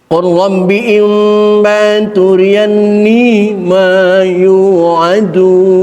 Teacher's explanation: lam ini makhrajnya sama dengan makhraj ra. Di dalam lam ra di situ juga. Maka idgham mutajanisen.